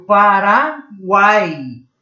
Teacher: Numa mesma sílaba, eu tenho uma vogal e duas semivogais. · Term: tritongo oral